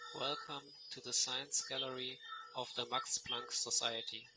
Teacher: as he says the e in welcome, his tongue will move up because the e sound has a your tongue moved up.